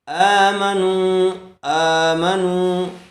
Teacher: کھینچیں گے نہیں، آمنوا، آمنوا، حمزہ کے اوپر کھڑا زبر ہے، کھڑا زبر برابر ہوتا ہے الف مدہ کے اس لیے تھوڑا کھینچ کر پڑھیں گے۔